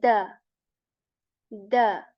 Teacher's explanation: tip of the tongue it touches the back of our upper teeth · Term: light sound